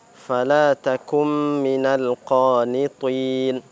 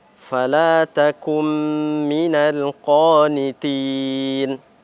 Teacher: Salah kita dalam melafazkan huruf ta, yang mana dia harusnya kita baca dengan tebal, kita baca dia dengan tipis.